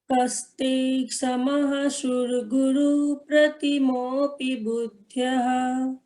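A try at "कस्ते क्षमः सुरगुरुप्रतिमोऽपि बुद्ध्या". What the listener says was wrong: हाँ, कई लोगों के उच्चारण में स की जगह श शक्कर वाला होता है, तो जैसे सूरगुरु को भी शूरगुरु पढ़ेंगे, उसे थोड़ा सुधारने का प्रयास करें।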